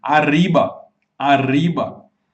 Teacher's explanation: você vai perceber que a ponta da tua língua ela oscila quando você fala arriba. E esse é o som que os mexicanos reproduzem quando fazem o R. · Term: rolling R